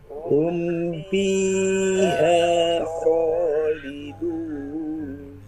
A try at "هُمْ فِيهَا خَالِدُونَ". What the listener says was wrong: Diulangi lagi, hati-hati huruf fa-nya. Huruf fa dia mempunyai sifat hamas dan ar-rohawa. Fi, bukan pi. Dan mahrotnya tidak boleh rapat bibir. Hum fiha.